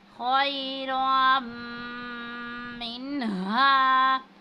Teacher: अलिफ पर मद है, इसको 5 अलिफ के बराबर खींचेंगे · अन युबदिलना खैरम मिन्हा, और वहाँ पर जो है वो तनवीन है। जब तनवीन आता है तो यह हरूफ यरमलून में से है, यानी इदगाम की सूरत में गुन्ना करेंगे